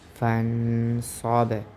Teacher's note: یہاں پر غنہ ہوگا، اس کی وجہ یہ ہے کہ صاد حرف اخفا میں سے ہے، تو یہاں پر اس وجہ سے ہم غنہ کریں گے۔